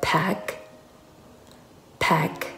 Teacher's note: เมื่อเติม ed เข้าไป ed นี้จะออกเสียงเป็นเสียง t นะคะ